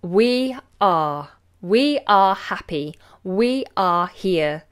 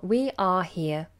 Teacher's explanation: nice open vowel notice that we don't roll into the r sound at all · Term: open long vowel